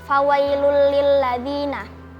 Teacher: karena ada dhammatain bertemu dengan huruf lam, dibaca melebur tanpa mendengung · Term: idgham bila gunnah